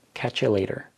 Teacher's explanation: This would be pronounced by a fluent speaker as "catch you later." Catch you later. So catch and you are combined into one word, catch ya, and then the T in later is pronounced as a D